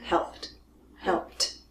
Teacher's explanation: the last consonant is a P voiceless